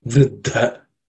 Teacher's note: In the third line, the first word, vriddho, dha is the compound consonant, the second letter. In that dha, second letter in that compound is an aspirated consonant.